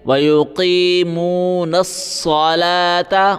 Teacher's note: نون کو صاد کے ساتھ ملائیں گے وَيُقِيمُونَ الصَّلَاةَ واو نہیں پڑھیں گے صلوات اس طرح بالکل نہیں